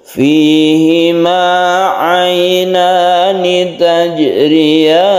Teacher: ada sukun jim yang kita sebut dengan kolkola sugra